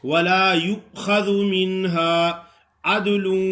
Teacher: وہ کے اوپر جو حمزہ پڑا ہے وہی حمزہ پڑھنا ہے، لیکن حمزہ جھٹکے سے ادا ہوتا ہے